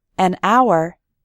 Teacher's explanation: in the word hour, the h is silent, so we say an hour